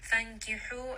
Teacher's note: ha is going to be from the middle of the throat. So make sure you do have a little bit of that air, that little bit of constriction.